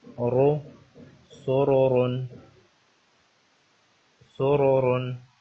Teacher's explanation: اس را کے اوپر پیش ہے اور اس سے اگلی را جو ہے اس کے اوپر دو پیش ہیں، تو اس لیے ان کو موٹا پڑھا جائے گا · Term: تفخیم